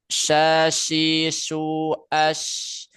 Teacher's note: Huruf syin tengah-tengah lidah yang mengarah ke langit-langit mulut